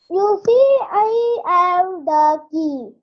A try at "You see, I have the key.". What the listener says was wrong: You see, ಆದ್ಮೇಲೆ comma ಇದೆಯಲ್ಲ, so give a small pause.